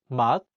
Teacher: In the word 맛, meaning taste, the 시옷 is in the 받침 position, so it's pronounced as 트. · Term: final consonant